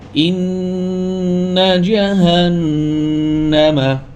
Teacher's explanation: নুনে টান দেওয়া যাবে না নুনে গুন্না হবে টান দেওয়া যাবে না